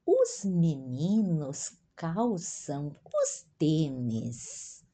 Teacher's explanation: o L diante de uma consoante pronunciamos uma U